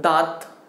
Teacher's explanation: अच्छा इसे अनुनासिक क्यों कहते हैं, जब आप इसे बोलते हो ना, जब आप इसे बोलते हो तो जो प्राणवायु होती है वो नाक से और मुंह से दोनों से निकल करके आती है